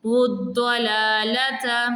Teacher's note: واو کے اوپر پیش ہے اور اس کو ہم ضاد کے ساتھ ملا رہے ہیں